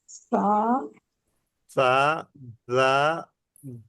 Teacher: আগা, উপরের দুই দাঁতের আগার সাথে লেগে নরম উচ্চারণ হয়